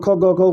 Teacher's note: ख ग घ को कंठ बोलते हैं